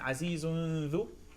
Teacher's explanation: to the You go straight from the zai to the dal without going through basically the organ of pronunciation for the noon. All right. You're going to skip the origin of the noon and go immediately for the dal.